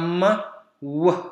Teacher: mah wuh juga sama jadi yang dihambat itu pada bagian bibir udara dihambat pada bagian bibir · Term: bilabial